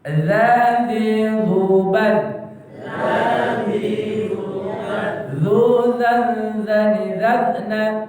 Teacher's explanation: Ujung lidah bertemu dengan ujung gigi atas. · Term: huruf za